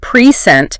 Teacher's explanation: if you stress the second syllable, present, it becomes a verb, meaning to give something or to show something.